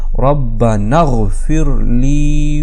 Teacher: اس کے بعد پھر ربنا اغفر لی نہیں ہے، یہ جو الف ہے یہاں پر پھر یہ گر گیا، اصل میں اغفر تھا، تو نون کو ہم نے ڈائریکٹ غین کے ساتھ کنیکٹ کر دیا اس کو، اور اس حمزہ کو گرا دیا